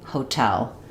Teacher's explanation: You can hear how that aspirated true T sounds natural in that word. If I were to say hotel with a flap T doesn't sound quite quite right. · That's because in hotel, we're stressing on the tell syllable. So, it functions just like the word tell.